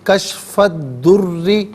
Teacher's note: دعت حرف شمسیہ ہے، حرف شمسیہ وہ حرف کے جس پر الف لام تو ہو لیکن لام کو پڑھا نہ جائے، تو کشف الضر غلط، کشف الضر، یہاں را مشدد ہے، اسے جماؤ کے ساتھ پڑھیں گے، را کے نیچے زیر ہے، باریک کر کے پڑھا جائے گا